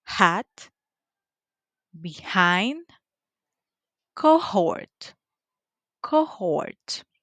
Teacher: it is voiceless. The point of articulation, it is glottal. The manner of articulation is fricative.